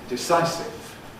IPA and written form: dɪˈsaɪ(clipped)sɪv (decisive)